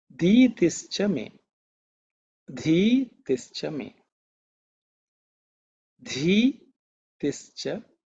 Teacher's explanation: So, this dha is actually aspirated sound